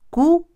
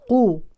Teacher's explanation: ننتبه جيدا لترقيق الكاف البعض يفخم للاسف الكاف في هذه الكلمه